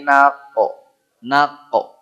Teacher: tempatnya Q dipangkal lidah